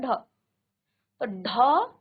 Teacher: ढ में आपकी जीभ थोड़ा सा रुक करके नीचे आएगी